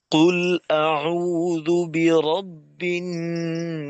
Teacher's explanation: কফ এমনিতেই শক্ত, আর যে কোনো হরফ যদি শুরুতে আসে তো সেক্ষেত্রে তার উচ্চারণটা ভেতরে থাকার তুলনায় একটু মজবুত হয়।